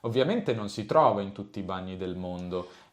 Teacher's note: Quindi qua l'accento di frase va non si trova. Ovviamente non si trova in tutti i bagni del mondo e il resto della frase ha un tono molto basso.